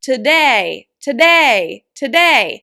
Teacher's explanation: you stress the syllable day and you make it longer, louder, and higher in pitch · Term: stress syllable day